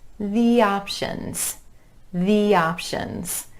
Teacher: we're gliding between those vowel sounds using a y sound go over the